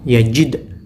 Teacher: Caranya bagaimana? Dipantulkan dengan cepat, tidak boleh ada imbuhan huruf di belakangnya, dan juga tidak boleh terlalu lambat, harus mantul dengan cepat. · Contohnya, yajid, tak boleh yajid, ataupun dibaca yajid, nggak boleh, harus cepat. Yajid, ujung lidah dipantulkan karena makhrajnya dal ada di ujung lidah